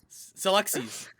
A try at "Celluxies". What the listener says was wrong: Emphasize, yeah. You either add an extra syllable or you emphasize the wrong one. It's so you know the word galaxies? It's the same thing. Celluxies.